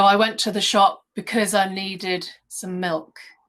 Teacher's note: it goes from cause to more of a schwa cuz